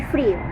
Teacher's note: frío tiene una vocal cerrada y una abierta